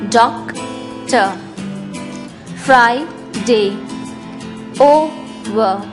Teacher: In all these words, as you can see, the first syllable is stressed.